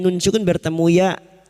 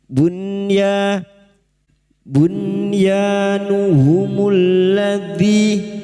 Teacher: nun sukun dibaca jelas tanpa mendengung bertemunya nun sukun dengan huruf ya atau wawu dalam satu kalimat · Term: izhar wajib